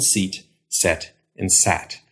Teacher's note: your tongue starts up high, e, then goes to the middle of your mouth, and then goes down to a. So your tongue can go up and down.